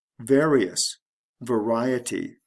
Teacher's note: the ending it would just be ous to ty various variety the stress shifts from the first syllable to the second syllable